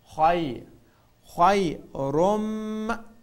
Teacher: Kha is one of the huruf musta'ila or isti'la. We pronounce it always heavy.